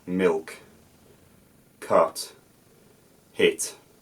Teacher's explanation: sound the syllable coda which is the end of the syllable you can hear a glottal stop I don't let the sound fizzle out milk cut hit but the glottis closes and the sound stops · I don't let the sound fizzle out milk cut hit but the glottis closes and the sound stops suddenly